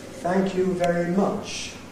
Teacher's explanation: Nucleus much, last syllable. So there's no prehead, there's no tail. We have the head, thank you very, and then nucleus much.